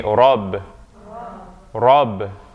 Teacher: when alif or fatha comes after the ra, it's going to sound like ah. It's that deeper sound, because ra is emphatic.